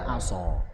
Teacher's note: Aso tebal banget karena punya sifat itbaq.